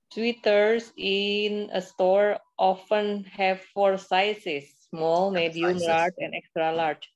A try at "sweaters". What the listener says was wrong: Sweaters. Sweaters ya, bukan sweater. Sweat. Kalau sweet, kalau sweet itu manis. Ya, kalau sweet itu manis. sweat sweater.